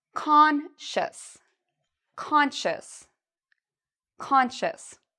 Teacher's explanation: So the C-I-O-U-S has a sh sound, like you're telling someone to be quiet, sh. And then we have a short U sound, shus, and an S at the end